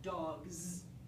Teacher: If it's a voiced sound like g or d, it's going to be z, like dogs.